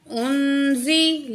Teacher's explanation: यहाँ भी जो है नून साकिन के बाद ज़ा है, तो यहाँ भी हम नून की आवाज़ को नाक में छुपा के पढ़ेंगे